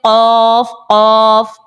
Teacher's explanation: جب بھی زبان کی جڑ تالو کے نرم حصے سے لگتی ہے تو قاف ہمارا نکل آتا ہے